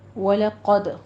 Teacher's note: وَلَقَدْ قوف کو پر پڑھیں گے، دال پہ قلقلہ کرنا ہے